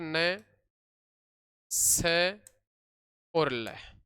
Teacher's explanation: जीवा मसूड़ों को स्पर्श करती है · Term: वर्त व्यंजन